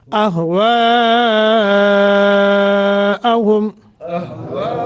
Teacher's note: اہواءہم مد متصل ہے لمبا کر کے